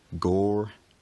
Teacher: The trilled r at the end becomes an approximant, gore. In my accent, the r eventually disappears alongside a lowering and breaking of the vowel for some speakers, gore.